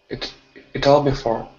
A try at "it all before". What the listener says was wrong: Yeah, even less T. It all before.